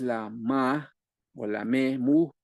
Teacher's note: Y también bilabial, pero nasal, que es la N, la M, que también es cercana a la PB, nada más que se ocupa la nariz y suena que es la ma o la me, mu, también en el área bilabial